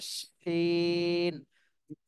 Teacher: এটা হলো শিন, জিহ্বার মধ্যখান উপর তালুর সঙ্গে লাগবে, কিন্তু শাসা শব্দ হবে। শিন তালবস্য উচ্চারণ, তালবস্য উচ্চারণ করতে যেভাবে শব্দ হয়, শাসা শব্দ হয়, ওইভাবে শাসা শব্দ করতে হবে।